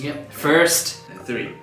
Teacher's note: In this case, the R sound is rhotic, it's pronounced.